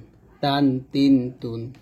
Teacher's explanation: উপরে দুই দাতের গোড়ার সঙ্গে লাগাইয়া পড়তে হয় তা যেমন এইযে জিহ্বার আগা সামনের উপরে দুই দাতের গোড়ার সঙ্গে লাগবে